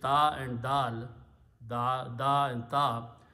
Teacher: you will notice that your tongue is touching about the same place for both of these letters. So in the makharij of the recitation, sound of ta and sound of dal are very close to each other.